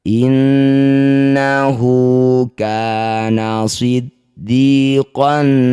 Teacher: Innahu kana siddiqan nabiyya. Inna, nun bertasydid sama dengan yang tadi disebut gunnah musyaddadah, dengungkan 2 harokat.